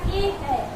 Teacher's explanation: ए ऐ जो है वो कंठ को भी ले रहा है और तालु को भी ले रहा है। ए का हम कंठ पे जोड़ दे रहे हैं, थोड़ा हम तालु पे भी टच कर रहे हैं, तो क्या क्या कहेंगे हम, ए ऐ कंठ कंठ। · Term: कंठ तालु